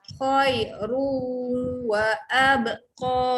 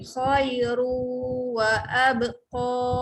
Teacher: Khairu, panjang ru, tekan di hidung untuk dengung.